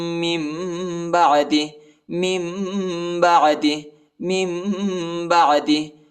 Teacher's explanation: نون ساکن کے بعد جو ہے با آیا ہے تو ہم ادھر نون نہیں پڑھیں گے، میم پڑھیں گے، میم کی آواز نکالیں گے۔